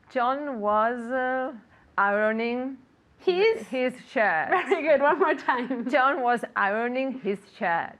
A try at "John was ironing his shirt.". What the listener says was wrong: Very good. One more time.